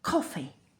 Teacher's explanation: Air burst on the k. Not just sound, an audible burst of air.